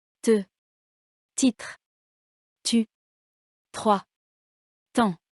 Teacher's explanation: T, comme dans titre, orale et sourde. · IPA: [t]